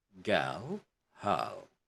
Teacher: RL words like girl, hurl, etc. are pronounced as one syllable with silent R.